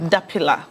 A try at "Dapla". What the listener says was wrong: The I is not stressed.